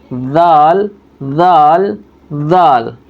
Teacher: زبان بیچ میں رکھ کر کے دانتوں کے بیچ میں بولیں گے